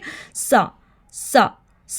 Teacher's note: सा सा सा पढ़ते हुए सीटी की आवाज़ बिल्कुल भी नहीं आनी चाहिए। · सा में हमने ज़ुबान की नोक को ऊपर 2 दांतों के दरमियान लगाकर थोड़ा सा बाहर निकालना है। ऊपर 2 टिथ के साथ लगाकर थोड़ा सा बाहर निकालते हैं।